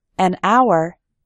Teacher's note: in the word hour, the h is silent